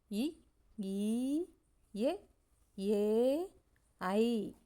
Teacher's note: இந்த உயிரெழுத்துக்கள் உதடுகளை விரிக்கிறதுனால பிறக்குது